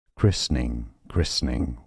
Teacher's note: Some may skip the middle syllable and say christening, christening, or, so that would be more American English pronunciation, christening or christening, christening.